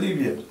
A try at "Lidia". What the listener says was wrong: No, Lidia. Lidia, con D.